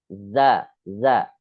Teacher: Jadi jangan sampai siulannya itu sama seperti huruf-huruf hamas. Ya, dia hanya getaran saja. Bukan desis yang keluar, tapi getaran. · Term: huruf zai